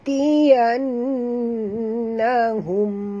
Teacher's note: Dekat nun ada tasydid, wajib dengung.